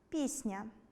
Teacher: Як у слові “пісня”. Звук [н'] м’який, тому попередній [с'] також стає м’яким. І вимовляємо ми це слово так - [п’і́с'н'а]. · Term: уподібнення за м’якістю